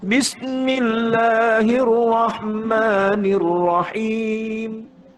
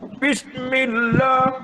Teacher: Head voice, bukan bawah.